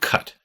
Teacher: in the word cut your tongue comes up in the back to meet your soft palate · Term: K sound